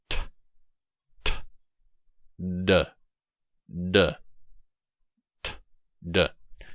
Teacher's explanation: When you say these sounds, you should feel a little burst of breath, a little explosion of breath. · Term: alveolar stops